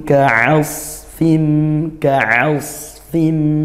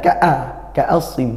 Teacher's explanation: ini Ain ya makhrajnya dari tengah tenggorokan